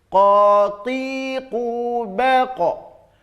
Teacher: di tenggorokan yang paling dalam ada anak lidah yang menggantung H maka pangkal lidah jauh ke dalam itu menempelnya maka dia akan bunyinya seperti Huruf qaf ya khotib pun beko